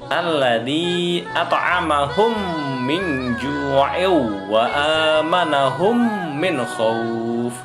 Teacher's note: mim masuk ke dalam mim, ya, pasti mim dibacanya, pasti m, tidak ada yang lain ya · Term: idgham mimi